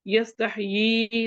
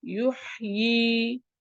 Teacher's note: یستحیی، اس میں بھی ہم نے اس کو یہ دو حرکات کیا، یہاں بھی دو حرکات وقف کریں گے تب بھی یستحیی دو حرکات پڑھیں گے